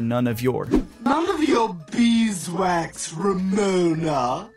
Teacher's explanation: none connects with of so none of and of connects with your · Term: connect speech